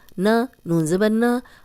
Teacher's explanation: نون کی جو زبر ہے اس کو لمبا ہونے سے بچانا ہے ہم نے